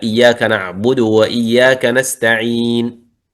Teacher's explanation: والإشمام يلحق الوقف، مثلا نقول اهدنا إياك نعبد وإياك نستعين، ما في صوت، فقط الإشارة بالضمة، هذا إشمام. أو نقول نستعين، نستعين يعني الضمة صغيرة، نستعين، صوت صغير.